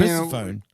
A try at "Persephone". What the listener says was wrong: No, we say Persephone. it's the same sort of pronunciation. You just put different. You put different stress on the syllables, I guess.